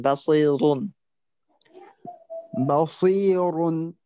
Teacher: আপনার এই র আমার মনে হচ্ছে যে আরেকটু মোটা করার সুযোগ আছে · র তখন মোটা যেহেতু পেশ আছে